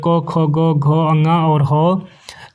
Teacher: यानी कि वर्णों का उच्चारण स्थान कंठ से जो है